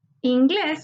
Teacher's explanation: Inglés, su sílaba tónica está en inglés. En la última sílaba encontramos la sílaba tónica, por tanto es una palabra aguda. Se tilda porque termina en S.